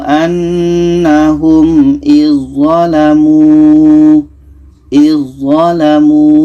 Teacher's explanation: Maka dzal ini kita tak baca lagi terus masuk ke dzho idzalamu. Ini yang pertama ujung lidah bertemu ujung gigi seri atas.